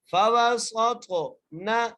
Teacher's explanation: سین کو سیٹی کے ساتھ پڑھنا ہے، سین کو تھوا سے ملانا ہے، تھوا کو موٹا کر کے پڑھنا ہے، تھوا پر قلقلہ کرنا ہے